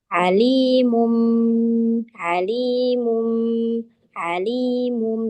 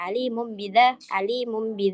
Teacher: boleh Enggak boleh alimum bid tapi harus ada gunnya alimum B jadi bnya berubah menjadi mim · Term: iqlab